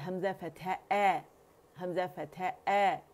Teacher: Usually हमजा हम यहाँ से अदा करते हैं, जो हम गलत करते हैं। हमने कहाँ से अदा करना है, फार थ्रोट से ही हमने इसे अदा करना है